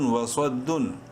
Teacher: واو زبر وا، صاد دال زبر صاد، بولڈ کریں گے صاد کو منہ بھر کے پڑھتے ہوئے